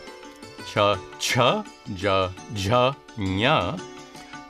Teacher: Next come the consonants, which are organized according to their place of articulation, starting with the gutturals at the back of the throat, K, K, G, G, N, the palatals at the hard palate